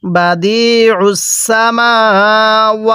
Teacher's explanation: এই আইনটা পড়ার সময় গলার মধ্যে চাপ দিয়ে পড়বেন